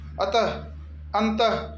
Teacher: विसर्ग को आप भी हो से उच्चारण करते हैं। जैसे अतः जो विसर्ग लगाते हैं उसका एक तरह से हो का उच्चारण होता है